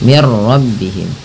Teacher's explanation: Nah, karena di sini nun mati bertemu ra, langsung saja diidghamkan. Idgham itu memasukkan bunyi nun ke ra sehingga bunyi nunnya tidak terdengar lagi. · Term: idgham bila gunnah